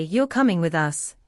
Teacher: with a rising tone at the end, it becomes a friendly confirmation question. But if your tone is flat or sharp, it might sound impatient or even rude, totally unintentional, but it happens.